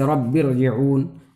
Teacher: را جو ہے باریک نہیں پڑھی جائے گی بلکہ پر پڑھی جائے گی